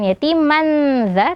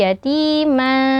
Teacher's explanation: kita samarkan bunyi tanwinnya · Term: ikhfa